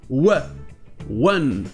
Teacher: Vous avez le son E, mais vous avez aussi le son du W juste avant.